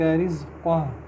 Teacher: زا buzzing sound آئے گی